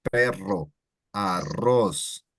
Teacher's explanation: perro or arroz that has 2 R's, it elongates quite a bit